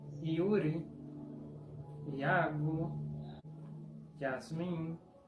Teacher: Y con A no suena como ya, suena como IA, sin sobreposición.